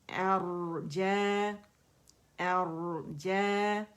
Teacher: را موٹا ہے اور ساکن ہے